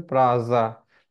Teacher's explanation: हमने सीख लिया है कि एस के अगर आगे पीछे वॉवेल हो तो एस क्या है, ज में बदल जाता है ना